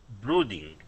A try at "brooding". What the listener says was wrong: good one more time